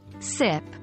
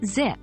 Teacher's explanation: s in sip voiceless versus Z in zip voiced